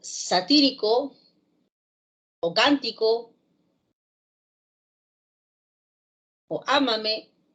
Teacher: Una palabra como satírico o cántico o ámame son palabras que llevan la fuerza de voz en la antepenúltima sílaba